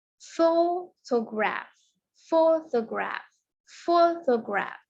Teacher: photograph itu kita cukup menekankan pada ini ya, pada suku kata pertama yaitu pho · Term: penekanan kata